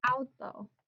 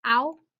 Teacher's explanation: Falls under accent rule 1. Verbal stress is on the second to last syllable.